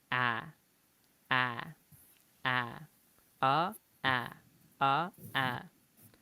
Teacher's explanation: un pequeño cambio en el sonido lo que hace básicamente es cambiar la a que en español es relativamente abierta y más o menos centrada a la tira un poquito más hacia el frente